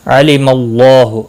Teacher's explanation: اللہ کا لام زبر کی وجہ سے پر پڑا جائے گا، اس کے اوپر کھڑی زبر بھی ہے، ایک الف کے برابر کھینچ کر پڑھیں گے۔